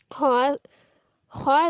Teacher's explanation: आगे आ गया खौ, खौ खराटे वाला खौ, इसको हमने भारी वाले हा के साथ नहीं चेंज करना, वरना गुनाह मिलेगा। खौ, खौ साकिन हालत में खौ अदा करते वक्त खराटे की आवाज़ सुनाई देगी। जैसे आपको मेरी खौ में खराटा सुनाई दे रहा होगा।